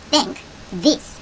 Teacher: T랑 H가 짝이 되면 혀를 이빨 사이에 끼우고 바람을 빼는 the 소리가 난다고 얘기했었죠?